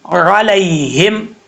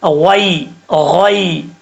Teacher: اس کے بعد ہے علیہم، را، عین زبر را، علیہم، لام کے بعد یا ہے، یا ساکن سے پہلے زبر ہے تو یا لین ہوتا ہے، اس کو مدہ نہیں کرنا، لمبا نہیں کرنا